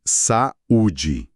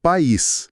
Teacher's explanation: Se você falar devagar, percebe que tem duas emissões de voz ali bem distintas para essas vogais.